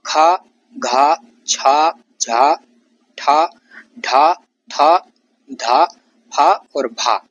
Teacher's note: जैसे खा, घा, छा, झा, ठा, ढा, था, धा, फा और भा। बोलने में फूंक अधिक निकलता है। उच्चारण में तेज वायु है। प्रत्येक वर्ग का दूसरा और चौथा वर्ण है। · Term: महाप्राण व्यंजन